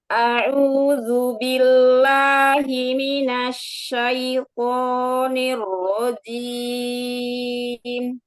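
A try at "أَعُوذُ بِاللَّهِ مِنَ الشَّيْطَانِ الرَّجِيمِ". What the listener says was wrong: Masya Allah, nanti la-nya ditipiskan lagi ya. A'udzu billah. Jadi jangan naik ke atas. Billah. Kalau la, nanti dia tebal. Billah ke depan lemparnya ya. A'udzu billah. Ke depan bawah. Suaranya jangan naik ke atas.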